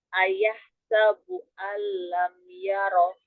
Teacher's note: Ro itu ujung lidah dan sedikit punggung lidah bertemu dengan langit-langit di atasnya. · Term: huruf ro